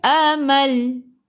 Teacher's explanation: bila berhenti matikan dengan lam, hujung lidah menyentuh gusi atas.